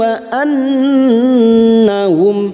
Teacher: nun yang bertasdid gunnah musyaddadah kita dengungkan selama 3 harokat